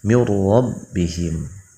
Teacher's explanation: huruf ro-nya dibaca tafhim